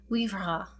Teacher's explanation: with a soft rolled or tapped R at the end. Typical of medieval French pronunciation.